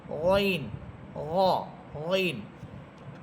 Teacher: গইন এবং খ এই দুইটা হরফের মাখরাজ এক। গইন এবং খ, অর্থাৎ গলার একেবারে শেষ ভাগ, কণ্ঠনালীর একেবারে শেষ প্রান্ত।